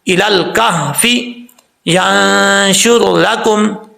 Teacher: نون ساکن کے بعد شین آ رہا ہے، یہاں پہ نون ساکن کا اخفا ہوگا